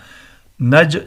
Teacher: جیم حروف قلقلہ میں سے ہے، ساکن ہے، قلقلہ ہوگا